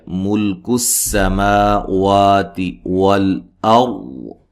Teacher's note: اچھا یہاں لام کو ہلانا نہیں ہے، سین کو باریک سیٹی سے ادا کرنا ہے، ما وا مد اصلی دونوں.